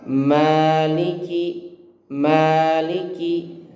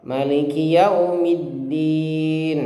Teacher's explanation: perhatikan dalam ayat ini maknya panjang ya, 2 harokat